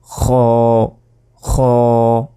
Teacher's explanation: হা এরপর খ আমরা অনেকে বলি খা বলি এটাকে এটা কিন্তু ভুল এটা বলতে হবে খলকের শেষ ভাগ হতে অর্থাৎ গলার শেষ ভাগ হতে এটা উচ্চারণ হবে